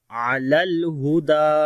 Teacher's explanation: ہا کو گلے کے نیچے والے حصے سے پڑھیں گے، دال کو لمبا کریں گے، اس کے اوپر کھڑی زبر ہے تو پڑھیں گے علل ہدا۔